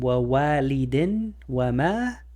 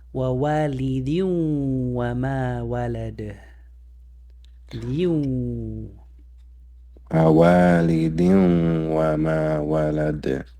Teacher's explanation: So the wow, it's gonna eat the nun, and you're gonna apply idgham.